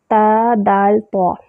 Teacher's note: یہ طوا ہے نا ظہر طرف اللسان، جب ثنایا علیہ کی جڑوں سے لگتی ہے تو طوا ادا ہوتا ہے